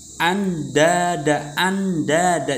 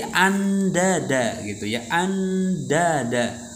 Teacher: Jadi nunnya langsung dibaca ke huruf dalnya.